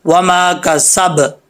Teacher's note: इस बा के ऊपर शद नहीं है, इसके ऊपर सिर्फ ज़बर है। जब हम इसके ऊपर वक्फ करेंगे, यहाँ पर स्टॉप करेंगे, तो बा की ज़बर जो है वो नहीं पड़ी जाएगी, बा को साकिन कर दिया जाएगा। इसमें कलकला है बा में, कलकला ज़रूर होगा, साकिन हर्फ में होता है, अगर बा साकिन हो तो, जो कलकला के हरूफ है उनमें से ये बा है।